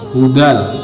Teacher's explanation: Menurut bahasa idgham adalah meleburkan, bila gunnah artinya tanpa dengung. Adapun menurut istilah adalah apabila ada nun sukun atau tanwin, boleh fathah tanwin atau kasroh tanwin atau dhammah tanwin bertemu dengan salah satu huruf lam atau ro. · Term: idgham bila gunnah